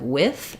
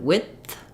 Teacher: So if I'm saying with, my I vowel goes right into my th sound.